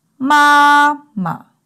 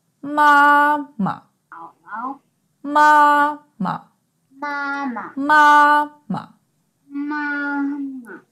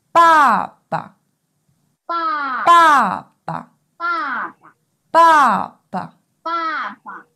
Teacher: the first syllable uses one of the four main tones, and the second syllable uses the neutral tone.